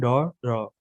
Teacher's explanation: इन वर्णों का उच्चारण करते समय जीभ पहले ऊपर उठकर मूर्धा को स्पर्श करती है, फिर झटके से नीचे आ जाती है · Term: गौण व्यंजन